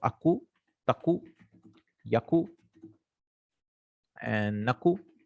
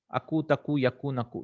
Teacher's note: You can drop the noons also, just for the sake of it. It's called takhfif, for the ease.